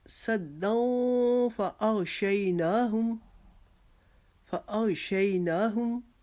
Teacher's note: ومن خلفہم، دوبارہ سے آگے صدوں کے بعد ہم اخفا کریں گے کہ 2 زبر کی تنوین کے بعد حرف فار ہے تو یہاں پر پھر ہم اخفا کریں گے ایک الف کی مقدار